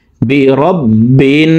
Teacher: 3 second পরিমাণ গুন্নাহ করে পড়ব।